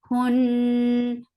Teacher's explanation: Kun for the muscle curling lips attached to Nun Nun will get sifa of Nunna. This Nunna is akmal sifa so keep the sound in your nose for a longer time